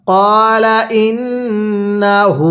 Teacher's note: এই যে হায়ের মধ্যে কিন্তু আমরা এক আলিফ টান দিব, কারণ যে হরফের উপরে এরকম উল্টা পেশ চিহ্নটা থাকবে ওই হরফটি আমাদের এক আলিফ টেনে পড়তে হবে।